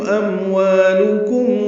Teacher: اموالکم میں 2 میم ہیں، دونوں میں اظہار شفوی ہے